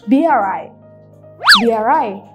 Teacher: suara R-nya itu langsung nyambung ke suara vowel setelahnya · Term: intrusion